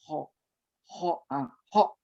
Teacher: jadi sudah tahu huruf ho itu pengucapannya seperti itu dan letaknya di ujung tenggorokan